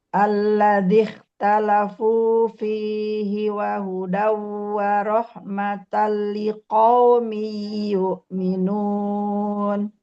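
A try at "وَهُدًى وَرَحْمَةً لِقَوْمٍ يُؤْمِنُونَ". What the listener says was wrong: Sempurnakan huruf linnya, liqaumi yu'minun. idghamnya sempurnakan. Wa hudaw wa rahmatan liqaumin yu'minun. Jadi tanwin bertemu waw, tanwin bertemu ya, ataupun nun sukun bertemu ya.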